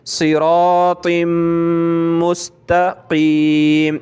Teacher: ता मीम दो ज़ेर तिम, मीम सीन पेश मुस, तिम मुस, मीम के ऊपर तशदीद है और तनवीन भी है तो नाक में आवाज़ पैदा करेंगे